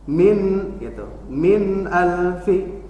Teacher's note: nun sukun bertemu alif maka dibaca izhar jelas, tapi jangan digentakan karena sifatul nun ada lin umar, yaitu tawasud, dialirkan sedikit.